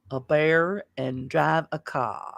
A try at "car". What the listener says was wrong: No R's.